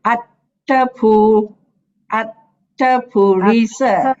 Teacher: the second A is short. So we will join with the pu. So we say attapu, attapurisa.